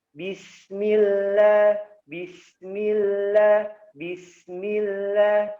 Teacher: sin memiliki sifat ya suaranya mendesis. Ya, jadi tidak boleh dimatikan kalau keluar nafasnya berarti bacanya begini.